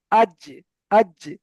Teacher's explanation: জিভের মাঝখান ওই সোজা উপরের তালুর সঙ্গে লেগে উচ্চারিত হয় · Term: জিম